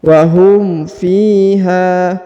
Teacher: Huruf fi dipanjangkan 2 harokat karena di depannya terdapat ya sukun atau ya mati.